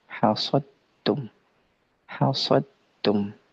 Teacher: hasadtum sempurna masuknya ke dalam huruf ta. Ini disebut dengan idgham kamil, ya, idgham kamil dari segi sempurna dan kurangnya disebut dengan idgham kamil.